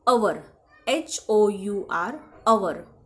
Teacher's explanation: आता इथे एचचा उच्चार ह असा होत नाही. ह सायलेंट असतो. त्याचा उच्चार अवर असा होतो.